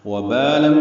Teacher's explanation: واو پر جو زبر ہے یہ ہونٹ نا تمام گول ہوتے ہیں، باہر کی جانب ہونٹ نکلتے ہیں۔ وبال بال مدہ ہے، دو حرکات لمبا کرتے ہیں۔ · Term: واو متحرکہ